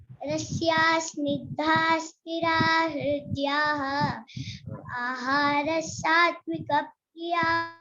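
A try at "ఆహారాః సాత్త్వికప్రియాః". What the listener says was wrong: ఆహార దీర్ఘం ఉందమ్మి. ఆహార సాత్విక ప్రియాః చెప్పు. సాత్విక ప్రియాః అనకూడదమ్మి, సాకు సావతి ఇచ్చినట్టుగా చెప్పాలి అక్కడ, ఎందుకంటే విసర్గ వినపడకూడదు.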